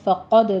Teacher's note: فقد میں قوف پر ہے، دال پر قلقلہ کریں گے